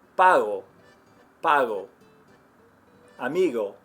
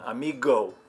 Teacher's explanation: little bit of a closure in the back of your throat it's almost like you're about to make the G sound without all the friction that we have in English